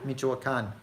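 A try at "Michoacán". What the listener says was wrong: Yeah, a little bit more emphasis on the last A.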